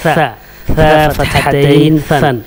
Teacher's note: زبان کی نوک کو سامنے کے اوپر اور نیچے والے دانت کے درمیان میں بیچ میں لائیں گے تو ثا نکلے گا